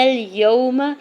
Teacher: واؤ ساکن سے پہلے یا کے اوپر زبر ہے، واؤ لین ہو رہا ہے، نرمی سے موڑتے ہوئے ادا کریں گے۔ میم کے زبر کو بغیر کھینچے ہوئے ادا کرنا ہے۔ · لنا، الف سے پہلے نون کے اوپر زبر ہے، لنا اليوم، لام کے اوپر سنگل زبر جلدی سے ادا کریں گے، نون کے زبر کو لام ساکن کے ساتھ ملاتے ہوئے پڑھیں گے